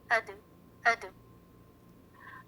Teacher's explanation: Example, جو بچوں کا کھیلنے والا بال ہوتا ہے, جب ہم اس کو زمین پہ زور سے پھینکتے ہیں تو بال باؤنس ہوتا ہے, یعنی واپس پلٹ کر تھوڑا سا اوپر اٹھتا ہے. اسی طرح دال ساکن جب پڑھیں گے تو آواز باؤنس بیک ہوتی ہے, آواز واپس پلٹتی ہے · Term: قلقلہ